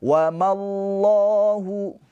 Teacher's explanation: Dan lafaz Allahnya ini dihukumi tafkhim tebal. Karena sebelum lafaz Allahnya ini harakatnya fathah pakai o ya tebal.